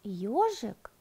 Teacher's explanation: сначала мы называем мягкий согласный звук и а потом гласный звук о она письме эти два звука обозначается одной буквой ё а со